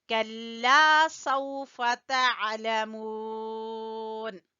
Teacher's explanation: کلا، باریک کاف ہے، کلا، لام کو تھوڑا سا کھینچیں گے الف مدہ کی وجہ سے